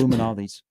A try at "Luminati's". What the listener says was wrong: It's not Luminaldi's. No, you said Aldi. You said Luminaldi's. Luminati's. Luminati's.